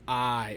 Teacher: the ae is a diphthong that means it's two vowels that are pronounced together for one sound